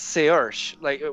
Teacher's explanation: So I think it's Saoirse, with an SH sound at the end, but even though there's no H in there.